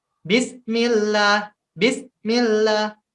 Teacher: Bismillah ini memutus antara bis dengan millah